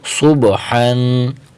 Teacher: حرف صاد کو موٹا کریں گے، صاد کی حرکت کو با کے ساتھ ملیں گے